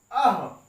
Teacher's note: विसर्ग को जब हम बोलते हैं तो दो ध्वनियां निकलती हैं, अ प्लस ह। आ यहां पे देख रहे हैं आप कंठ है, और यहां पे हा भी देख रहे हैं आप, हा भी कंठ है।